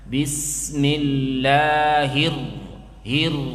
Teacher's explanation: Ra yang bertasydid, jangan terlalu banyak getarannya.